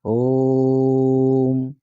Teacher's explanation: जो ओ का उच्चारण है वो 3 गुना होना चाहिए ओ का